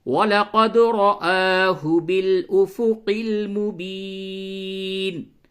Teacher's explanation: اور دال میں ساکن ہے قلقلہ کریں، را کو پر کر کے پڑھیں. قاف کی ادائیگی میں خاص طور سے توجہ دیں، یوں پڑھیں وَلَقَدْ رَآهُ بِالْأُفُقِ الْمُبِينِ.